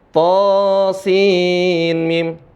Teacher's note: To-nya dibaca 2 harokat karena ada alif.